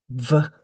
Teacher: If they have an F in their first language, then I sometimes write a BF to try to help them make the V. So you're biting your lip the same as for an F when you make a V, but it's also sort of like a B because you're vibrating your throat. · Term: V sound